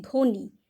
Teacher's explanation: আমরা কিন্তু ব এর উচ্চারণ করছি না